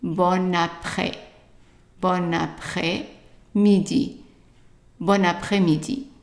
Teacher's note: because bon ends with an N and après starts with a vowel, we put the 2 words together and we would pronounce it bon après.